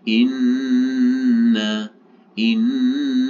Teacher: ini adalah bacaan dengung Inna Kenapa di dengung karena ada Nun yang bertasjid paling tidak ini kita tahan selama tiga harakat ya menendengungkannya Inna